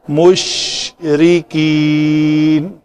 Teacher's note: شین کو کلکلا نہیں ہونے دیا، یہ نہیں پڑھا مشرکین، نہ، شین کے مخرج کو نہیں چھوڑنا اور آگے را کو لے لینا ہے۔